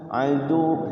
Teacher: Aduwwum enggak boleh enggak boleh karena tasydid. Tapi ketika waqaf di adu maka ditahan wawnya.